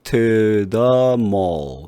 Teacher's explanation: to the mall 이렇게 중성모음 소리로 바뀌어요. 소리가.